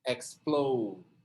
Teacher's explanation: Tá vendo que é no plow a sílaba tônica. Explode. Daí você vai colocar o Dzinho fraco ali no final.